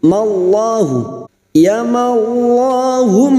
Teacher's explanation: mim yang bertasdid gunna musyaddadah kita dengungkan selama tiga harakat